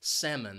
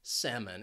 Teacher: That second syllable has that schwa sound. It's an unstressed syllable. Salmon. And the reason why this word is commonly mispronounced is because of that L.